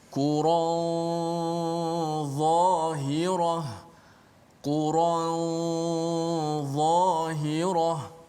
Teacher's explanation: ikhfa nun pada dha ini, dia bunyi dia ada tebal sedikit, bunyi tafkhim tebal pada gunnah